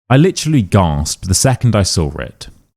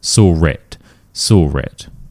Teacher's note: There's no R in either of these words, yet for some reason we are adding an R sound. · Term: intrusive R